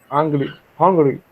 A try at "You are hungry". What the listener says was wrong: Yeah, remember the pronunciation of H. Recordemos la pronunciación de la H, ahí también se pronuncia. You are hungry.